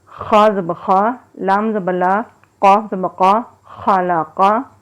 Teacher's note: قاف بھی موٹا حرف ہے اور خا بھی موٹا حرف ہے، دونوں کو پر پڑھیں گے اور لام باریک پڑھیں گے